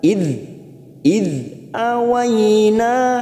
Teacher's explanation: namanya mad jaiz munfasil, karena ada mad yang bertemu dengan hamzah di lain kalimat. Panjangnya bisa 4 sampai 5, tetapi kita harus konsisten.